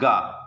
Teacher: कंठ से निकलता है, अल्प प्राण है, अल्प प्राण है, मतलब यानी कि सांस ज़्यादा निकलती है।